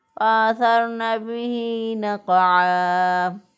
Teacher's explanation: قاف پہ اسی طرح ساکن حالت میں قاف پہ قلقلہ ہوگا، اور وقف کی صورت میں عین دو زبر الف ان جو ہے وقف کی صورت میں ایک الف سے بدل جائے گا. تو پھر ہم اس کو پڑھیں گے فأثرن به نقعا.